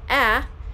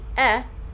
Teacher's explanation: instead of saying the short a ah and they said the short e e